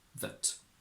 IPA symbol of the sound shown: ə